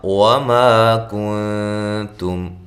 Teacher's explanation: وما کنتم ما الف مدہ ہے، کن اخفا ہے، باریک اخفا ہے